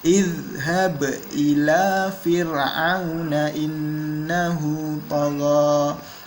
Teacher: yang benar idz ditahan, hab pantulkan